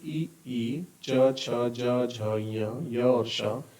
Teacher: इनका उच्चारण स्थान है तालु और इनको हम तालव्य बोलते हैं